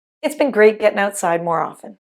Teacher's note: Did you notice the T was dropped in “often” so it sounded like “ofen”? · “It has” contracts to “it’s” and “getting” reduces to “gettin’.”